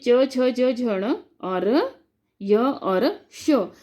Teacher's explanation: इनका जब उच्चारण करते हैं तो हमारी जीभ जो है वो तालु से टच करती है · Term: तालव्य